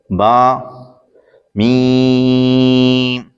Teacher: با دونوں ہونٹوں کے تر حصے سے ادا ہوتا ہے اور میم دونوں ہونٹوں کے خشک حصے سے ادا ہوتا ہے